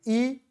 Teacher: जिसके उच्चारण में मुंह लगभग बंद रहता है यानी कि जिनको बोलने में मुंह पूरा खुलता ही नहीं है